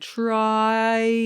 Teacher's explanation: you actually open up to ah but it's a diphthong